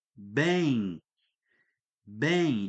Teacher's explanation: Ele traz embutido ali nele uma letra I. Ele traz para nós essa letra I e por isso, olha só, B, o E.